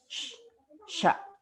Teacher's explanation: ketika kita mengucapkan huruf sya itu ada udara yang menyebar di dalam mulut kita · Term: at-tafashi